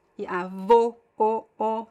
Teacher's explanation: the closed O is closer to the U sound because it's a very closed sound. It's more like rounded, and you don't have to open your mouth that much.